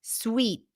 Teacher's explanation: here we have a tense e a high front vowel sound